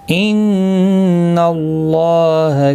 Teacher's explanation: ان، نون مشدد پر غنہ ہوگا. اللہ کا لام زبر کی وجہ سے پر پڑھا جائے گا. اس کے اوپر کھڑی زبر بھی ہے، ایک الف کی مقدار کے برابر کھینچ کر پڑھیں گے.